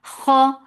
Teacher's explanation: This is musta'aliyah. This is a heavy letter, but it has infitah.